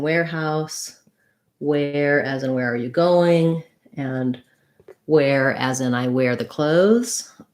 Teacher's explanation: These all have the same pronunciation with the air diphthong